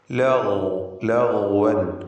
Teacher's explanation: غين استعلاء അക്ഷരമാണ്, തഫ്ഖീം ചെയ്തു ഉച്ചരിക്കണം. ലഗ്വൻ. അതോടൊപ്പം അതിന് റഖാവ എന്ന സ്വഭാവമുണ്ട്, അയവോടുകൂടി ലൂസാക്കി ഉച്ചരിക്കുക.